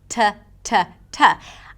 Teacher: touches right above the front teeth on that little bump, it's called the alveolar ridge